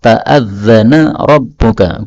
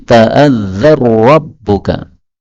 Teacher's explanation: nun ketemu ra, ta'adzana rabbuka, boleh idgham menjadi ta'adzar rabbuka